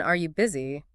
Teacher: If you ask someone, are you busy? Your voice naturally goes up at the end there. It's almost like you're sort of holding the door open for a yes or no answer. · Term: rising pitch, yes, no questions